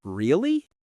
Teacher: When you ask a question like really, your voice rises just like the second tone.